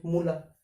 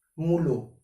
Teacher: এখানে রস্য যে স্বর সেটির প্রভাবে আ পরিবর্তন হয়ে ওতে পরিণত হয়েছে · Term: স্বরসঙ্গতি